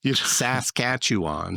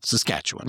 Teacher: really, it's just you emphasize just the second syllable